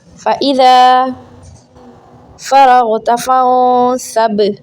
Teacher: فَإِذَا الف ہے، اس کو 1 سیکنڈ کھینچیں۔